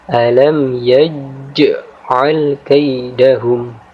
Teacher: Jadi huruf jim di sini kita baca dengan cara memantul sehingga jelas jim sukunnya